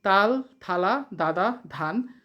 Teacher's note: প্রশ্ন 11 দন্ত ব্যঞ্জন কাকে বলে যেসব ব্যঞ্জন ধ্বনি উচ্চারণের সময় জীভের ডগা উপরের পাটির দাঁতের সাথে লেগে বায়ুপথে বাধা সৃষ্টি করে